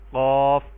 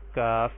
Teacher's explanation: قاف کو پر کر کے پڑھیں گے اور کاف کو باریک کر کے پڑھیں گے۔ قاف کو جو ہے زبان کی جڑ کوے سے متصل تالو سے لگائیں گے تو یہ حرف قاف ادا ہوگا، اور کاف کو جڑ سے تھوڑا سا پہلے اس کی ادائیگی ہوگی۔